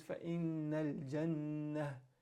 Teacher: if you stop on the ta marbuta, it turns into a ha. So it becomes fa innal jannah.